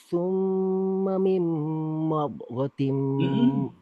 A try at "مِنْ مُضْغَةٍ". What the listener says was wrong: Hurufnya domma, mimnya itu domma. Diulang dari summa saja.